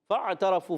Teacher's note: فا کو عین سے ملائیں گے. عین حرف حلقی میں سے، حلق کے درمیان والے حصے سے